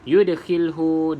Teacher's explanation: da qalqalah surah, lantunkan sedikit saja